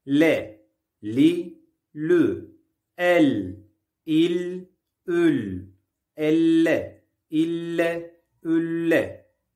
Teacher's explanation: Lam harfi dilin ucunun orta damağa genişçe yapıştırılmasıyla çıkar. İnce bir harftir.